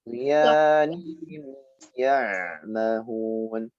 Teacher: Ghin sukun. Ghin itu huruf tebal dibaca dengan suara yang memanjang juga.